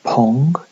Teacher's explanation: when it's followed by a stressed vowel as in pong it get aspirated